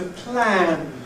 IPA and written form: plæn (plan)